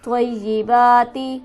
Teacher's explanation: طیبات, یہاں پر تشدید ہے, اسے ہم سختی سے ذرا رک کر پڑھیں گے. با پر ہمارے پاس کھڑی حرکت موجود ہے, اسے بھی ہم ایک الف کے برابر کھینچ کر پڑھیں گے.